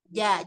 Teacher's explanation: Tengah lidah ini ada bagian tengah lidah yang terangkat dan dia menempel. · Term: jim